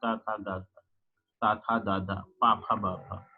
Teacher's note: इन सब में क्या होता है कि हम ध्वनि को रोक लेते हैं अथवा वायु को रोक लेते हैं और अचानक छोड़ते हैं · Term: स्टॉप प्लसिव साउंड